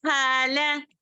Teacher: ہا میں کیا ہے الف ہے اور ہا کو کھینچیں گے لا کو نہیں